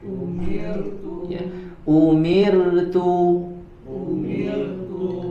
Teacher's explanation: huruf ro sukun sebelumnya harakat kasrah maka dibaca dengan tipis umirtu Coba umirtu ya umirtu umirtu tidak dibaca dengan tebal ya